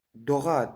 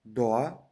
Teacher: bu holatda siz gʻ harfini talaffuz qilmaysiz va undan oldin kelgan nuqtasiz o harfini ham chozib aytishingiz shart emas